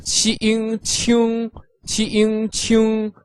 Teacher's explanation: Ing pronounced ing, altogether qing qing, with the third tone, which is like a V shape, going from up to down and then up a bit. 请 or in a shorter version, 请.